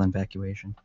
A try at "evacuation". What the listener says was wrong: Invacuation? Okay, but you said in-vacuation.